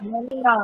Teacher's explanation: Oh, Tetapi Satu ya, Manuna. tetapi disebabkan hukum raum bunyi baris depan nu ni hanya jadi 1/3 saja. Pendek sangat ya.